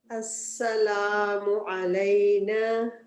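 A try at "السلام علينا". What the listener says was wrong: منہ گول مت.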